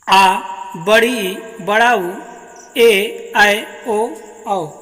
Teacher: ऐसे स्वर जिनके उच्चारण में ह्रस्व से 2 गुना समय लगता है उन्हें दीर्घ स्वर कहते हैं